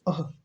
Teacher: जैसे लिखते हैं ना राम, तो ये जो अह, हा की तरह उच्चारित हो रहा है ना, ये जो अह है यह जो है विसर्ग कहा जाता है और इसका उच्चारण स्थान जो होता है कंठ होता है